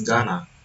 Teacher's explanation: the alveolar stop T in to is assimilated and reduced, while the nasal end spreads, producing a smoother articulation.